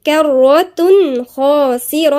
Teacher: خا مفخمة بس قبليها في اللي هو التنوين بالضم وبعديها حرف الخاء، دي بقى الخاء دي من حروف الإظهار يبقى في إيه؟ إظهار مفيش غنة